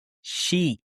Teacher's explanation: with sheep, it is a much longer, extended I sound. And in order to make this sound, you have to open up your mouth and really smile.